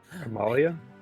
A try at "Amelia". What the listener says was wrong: Sorry, it sounded like you said Amalia with an A, but it is Amelia with an E.